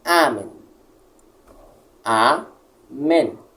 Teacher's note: automaticamente a primeira se torna tônica